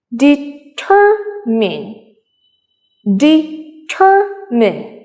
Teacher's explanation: the stress is on tur